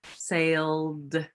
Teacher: my sail is a voice sound and so my voice stays on and the ed says the d sound